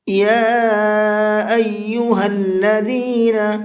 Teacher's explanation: یا کے اوپر چھوٹا مد ہے تو اس کو 1 سے 3 الف کے برابر کھینچ کر کے پڑھیں گے۔